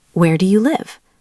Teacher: We use falling intonation for WH questions, the questions that start with who, what, where, when, why, and how. Even though they're questions, your voice goes down at the end.